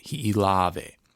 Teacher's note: The emphasis is on that second to last lave.